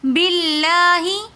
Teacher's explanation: لفظ اللہ سے پہلے زیر آ رہا ہے تو اس لیے ہم لفظ اللہ کو باریک پڑھیں گے